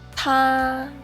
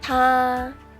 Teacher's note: The first tone in Mandarin is high and level.